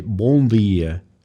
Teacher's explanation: European Portuguese, which they would say bom dia, nasal sound coming through